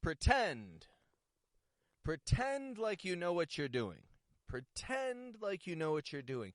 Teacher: Notice that not only am I making the vowel sound, the N, not only am I making it longer than in the first syllable, pretend, but I'm also raising my tone of voice. I'm peaking it right up to contrast the weak, unstressed syllable.